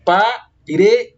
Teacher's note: Percebam que o re é pronunciado com mais intensidade. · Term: paroxítonas